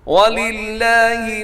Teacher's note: اور لاسٹ آیت دیکھیے گا وَلِلَّهِ مَا فِي السَّمَاوَاتِ وَمَا فِي الْأَرْضِ وَإِلَى اللَّهِ تُرْجَعُ الْأُمُورِ. وَلِلَّهِ کو باریک رکھیے گا کیونکہ لفظ اللہ سے پہلے لام کے نیچے زیر ہے